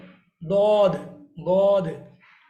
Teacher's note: Side of tongue is touching to your molars.